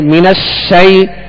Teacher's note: شین کی آواز جو ہے آواز منہ میں پھیل کر ادا ہوگی